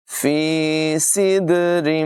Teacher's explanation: یہاں پر دال میں قلقلہ کریں گے